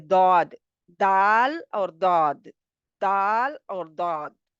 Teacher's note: दौद जो है इसमें आवाज़ जारी रहती है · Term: रखावत